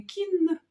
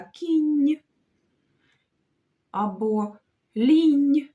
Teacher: А м'яко, як кінь, бо ми ж кажемо не кін, а кінь або лінь. То тут буде дві м'яких приголосних.